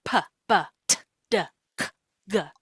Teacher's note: PB, t- du, c-g, all of those are stops. They completely stop the flow of air. And then once the obstruction is removed, a burst of air follows. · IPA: /p, b, t, d, k, g/